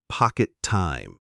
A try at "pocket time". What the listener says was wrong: You said it a bit too fast and separate. Try to make it sticky. It sounds like one word with a long T in the middle.